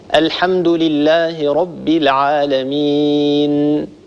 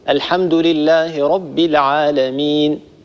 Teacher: أقل من هذه الغنة بقليل تكون في النون والميم المخفاتين، أقل من هذه الغنة تكون في النون والميم المظهرتين الساكنتين. فالنون في كلمة العالمين التي وقفنا عليها هي نون ساكنة مظهرة، بالتالي نعطيها حقها من الغنة